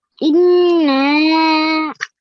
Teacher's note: you have to keep the noon sound in for at least 2 seconds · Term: nasal sound